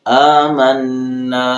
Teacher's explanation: حمزہ کے اوپر کھڑی زبر ہے تو ایک الف کے برابر اس کو لمبا کریں گے